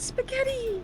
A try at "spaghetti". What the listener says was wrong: the intonation of the way you said spaghetti was very like Luigi. Spaghetti, spaghetti.